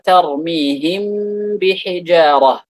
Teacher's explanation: Mim merupakan salah satu huruf yang keluar dari dua bibir ketika dua bibir itu ditempelkan. · Maka mim diikhfakan ketika bertemu dengan ba dengan apa? Dengan ghunnah. ma baqa'il gunnah, dengan gunnah yang dilebihkan. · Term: al-ikhfa asy-syafawi